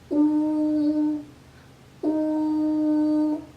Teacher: Los labios se hacen en forma circular y se proyectan hacia afuera.